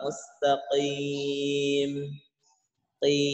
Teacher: Huruf qaf ini letaknya dia bukan di bawah, tetapi di atas tenggorokan, bahkan dia pangkal lidah. Berarti lidah yang paling belakang itu huruf qaf.